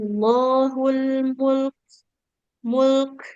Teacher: Jadi lam dengan kafnya lamnya dialirkan dulu suaranya mul baru masuk ke kafnya mengalir nafas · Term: lam sukun